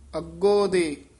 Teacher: ਥੋੜਾ ਜਿਹਾ ਕਸ ਕੇ ਲੰਮੀ ਆਵਾਜ਼ ਨਾਲ ਸੰਬੰਧਕ ਪਾਠ ਹੈ